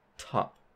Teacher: in the word top, the T has a puff of air coming out of your mouth when you say it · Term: English plosive aspiration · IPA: ['tʰap]